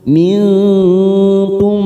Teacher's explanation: Mim sukun bertemu mim, idgham mimi. Ya, kita tekan 3 ketuk. · Kita samarkan bunyi nun sukun 3 ketuk. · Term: Ikhfa hakiki